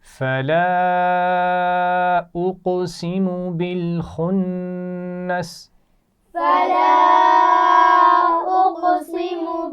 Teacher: خا موٹا پڑا جائے گا اور نون پر غنہ ہوگا